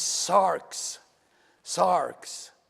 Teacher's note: There is no vowel between the R and the X